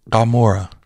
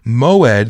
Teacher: it's not just G it's not a hard G it's in the back of the throat and often can make the o sound as as well um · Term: Ain